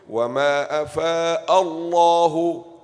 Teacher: There's the hamza ma qabal, it is maftuh. This name of Allah will be what? Full mouth.